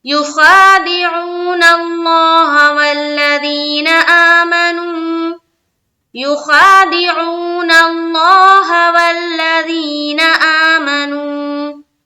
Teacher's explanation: لفظ اللہ کا لام اس سے پہلے زبر ہے نا، تو اس کو اب ہم کیا کریں گے؟ پور پڑھیں گے، یعنی کہ بولڈ کر کے پڑھیں گے